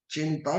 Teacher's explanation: चिंता में हमें अनुस्वार दिख रहा है और वो अनुस्वार को न में कन्वर्ट कर देंगे